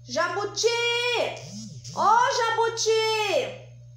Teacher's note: Porque a última sílaba é a mais forte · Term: oxítona